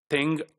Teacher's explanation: The third sound, it is also called eng, E-N-G, eng, or engma, right? This is the stop, nasal stop, which is articulated from the velar, right? So engma.